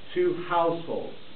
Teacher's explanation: the first syllable is unstressed the second syllable is stress